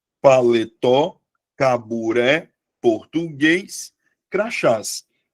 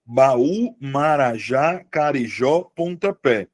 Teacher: todas as palavras tenham como sílaba tônica a última sílaba